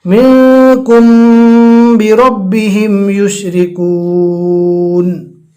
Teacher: جب جزم والی میم کے بعد با آ جاوے تو وہاں پر اخفاء شفوی ہوتا ہے، یعنی گناہ کے ساتھ پڑھا جاتا ہے